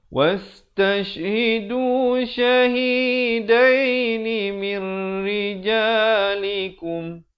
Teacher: Ini baca mir, asalnya min rijalikum, tapi dia kena baca mir rijalikum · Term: idgham bila gunnah